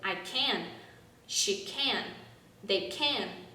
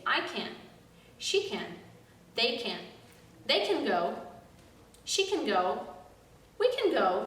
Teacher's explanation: the verb can is very much over pronounced in the affirmative form we are supposed to pronounce it very shortly emphasizing the subject more than the verb